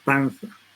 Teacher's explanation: Cuando decimos panza, en ningún momento, por ejemplo, el alveolo entra en contacto con el ápice de la lengua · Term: interdental